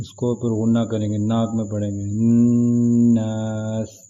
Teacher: نون کے اوپر غنہ ہے، اس کو اوپر غنہ کریں گے، ناک میں پڑھیں گے